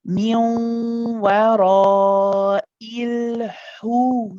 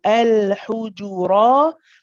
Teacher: the lips are circled straight away as soon as I enter the ha.